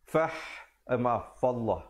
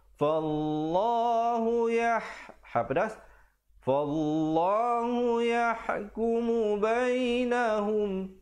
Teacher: Lafzul jalalah, perkataan Allah jika datang sebelumnya baris atas, dibacakan dengan tebal.